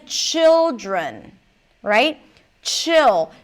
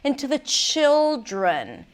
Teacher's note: Chill. So the ch is a little longer than usual, and the I, which is a short vowel, is a little longer than usual, and the L is longer.